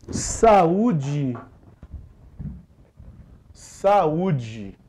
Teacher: a ser usada aqui é a regra do hiato em que duas vogais não ficam juntas na mesma sílaba · percebamos que o u tá se separando da vogal anterior